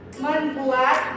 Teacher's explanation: bunyi N berubah menjadi M karena pengaruh bunyi awal kata buat